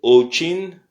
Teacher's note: l'accent est sur le O